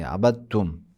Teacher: اب دال کو تے میں ادغام کریں گے۔ عبد تم، عبد تم، دال الگ سے تم الگ، عبد تم، عبد تم نہیں پڑھیں گے، عبد تم پڑھیں گے، ملا کے پڑھیں گے، عبد تم۔